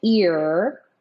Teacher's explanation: if I'm saying ear then my lips are probably a little bit more retracted than they would be otherwise